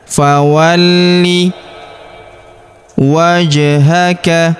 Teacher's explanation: Huruf li kita tahan dan tekan karena terdapat tanda tasydid di atasnya. · Huruf ja berharakat sukun kita pantulkan atau kita qolqahkan. Wajhaka huruf th berharakat sukun kita pantulkan atau kita qalqalahkan.